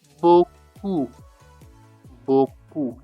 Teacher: You drop the p at the end.